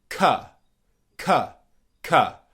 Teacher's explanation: Okay, it's not ka, it's ka. So it's the schwa sound, and not the o sound as it is spelt.